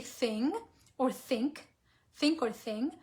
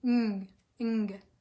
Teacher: think about that N that you're saying. It's not really N. It has like an NG sound. Ng. So that's it.